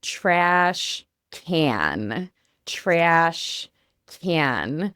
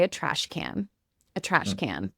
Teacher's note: we're going to use the American A, and then we're also going to get up in our nose and use that nasally sound as well for trash can.